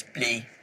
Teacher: multicultural London English vowels are much more like monophthongs, so you keep your tongue still. So play becomes blee.